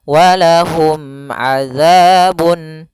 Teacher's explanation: Mim mati ketemu ain harus jelas yaitu izhar syafawi, mimnya tidak boleh ditahan.